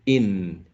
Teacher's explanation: when we produce this final consonant sound the tongue goes up to the alveolar ridge